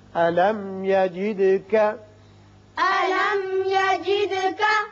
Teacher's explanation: میم پر اظہار ہوگا، دال کی صفت قلقلہ